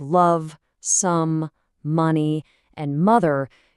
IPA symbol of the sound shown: ʌ